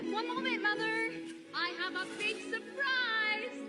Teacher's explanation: it's this prolonged sing-songy tune that's called a calling tune